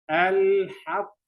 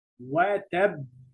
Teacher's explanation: the degree of qalqalah, the vibration here is so strong